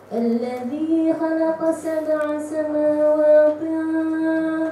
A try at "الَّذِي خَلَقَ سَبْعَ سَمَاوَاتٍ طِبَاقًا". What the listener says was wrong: Ada dua di situ. Kha tak nak menjadi jadi ta di situ. Tak nak berubah jadi ta. Lembutkan tak. الذي خلق سبع سماوات طباقا. Sebab apa jadi itu? Macam tadi kita cakap pasal pengaruh huruf tebal. Sebab tu baca الذي خلق الذي خو. Kha ke mana-mana pun, dalam keadaan apa pun, dia kena bunyi dia punya sifat dia.